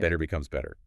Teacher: When a T sound comes between two vowel sounds, we don't say a hard T. It softens and flaps and sounds more like a fast D. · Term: flap T